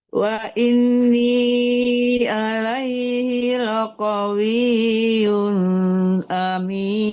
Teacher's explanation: Wa inni laqawi, jangan laqawi, jangan ditahan di qa, tidak ada panjang qa-nya di situ · laqawiyun ya harus jelas tanwinnya, jangan nggak ada samaran, tidak dengung di situ ya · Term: tanwinnya harus jelas